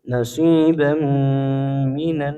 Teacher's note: Eh kemudian nasibam minanar ya tanwin bertemu mim hukumnya ilgamunah ya tanwinnya menebur ke huruf mim disertai gunah